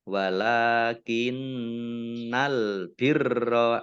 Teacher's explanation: Walakinnal birra lam fathah berdiri mat tobi'i kemudian nun tasdid bacaan gunnah dibaca mendengung ditahan 2 harokat